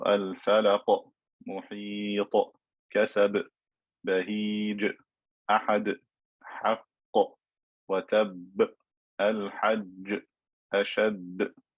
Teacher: Some ulama refer to this type of qalqala as qalqala kubra, where you stop on the qalqala letter. It should be louder or stronger in sound compared to the qalqala that is in the middle of a word or is joined to the next word.